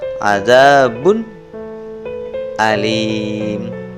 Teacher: dhommatain tanwin ini harus dibaca jelas karena bertemu dengan huruf Idhar berupa huruf hamzah